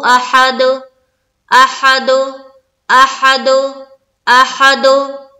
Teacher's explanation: echo sound निकालना है दाल के ऊपर